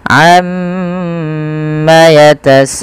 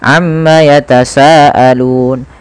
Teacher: ada mad wajib muttasil yang dimana kita harus memanjangkan bunyi sa sepanjang 4 atau 5 harokat